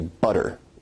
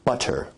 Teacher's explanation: Now notice where we write it with two T's in English that your tongue is producing a tap sound there rather than a full stop or plosive sound